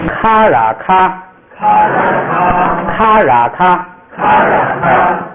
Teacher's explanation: 说后边一个字母啊，读轻声，就不按那个什么一声二声读轻声